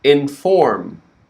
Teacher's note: The major word stress on inform is for.